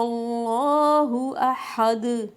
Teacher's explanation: دال پہ دو پیش تھی، ہم نے اس کو ساکن کر دیا، تو دال پہ جب جزم لگی تو ہم قلقلہ کریں گے